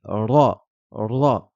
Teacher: pas du tout en français donc c'est un r roulé RA il faut lever la langue pour qu'elle touche le palais qu'elle frappe le palais · la lettre RA va ressembler à un r espagnol c'est ce qu'on appelle un r roulé on ne le trouve pas du tout en français donc c'est